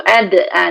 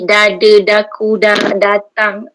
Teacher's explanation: Untuk baca Quran, hujung lidah tu sentuh ke pangkal gigi, kacip atas, dekat daging tu.